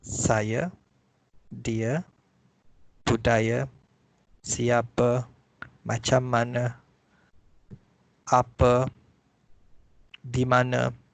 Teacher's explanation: if the word end with A, in spoken Malay, we pronounce it as the schwa sound.